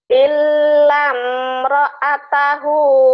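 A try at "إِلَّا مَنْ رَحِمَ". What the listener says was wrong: Jangan ditahan. Illam. Illam jangan ditahan. Illam jangan. Illam. Gak ada yang panjang. Illam.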